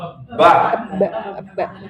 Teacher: Ba itu bibir bagian dalam.